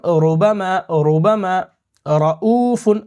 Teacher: را کو یہاں پہ موٹا کریں گے کیونکہ اس پہ زبر ہے